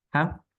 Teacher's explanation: Haqq ditahan dulu, baru qalqalah. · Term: Tasdid qalqalah